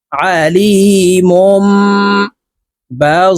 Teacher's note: তানুইনের পরে একলাফের হরফ বা আসছে এই কারণে এই মিম দ্বারা পরিবর্তন করিয়া গুন্নার সহিত পড়বো